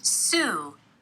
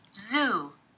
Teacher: in the first word, the initial consonant is voiceless. Sue, And in the second word, the initial consonant is voiced.